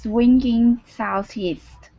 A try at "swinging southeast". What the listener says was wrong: Good, much better.